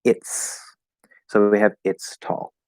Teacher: we're just left with the t straight to the s well the t is voiceless and so it actually affects the pronunciation of the s because it's easier to say so instead of a z sound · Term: s sound